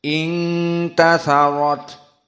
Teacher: harus dibaca dalam keadaan hams dikeluarkan nafas